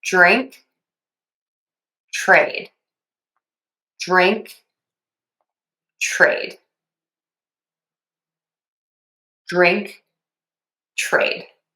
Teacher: The tip of the tongue is touching the teeth for that T or the D. And then you either flip the tongue back or t push it down to the bottom of the mouth for that R.